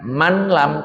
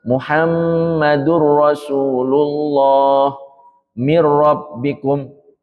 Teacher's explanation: dibaca lebur nunnya hilang ya nun sukun ini dileburkan ke huruf lam atau ro setelahnya tanpa disertai dengung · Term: idgham bighhairi ghunah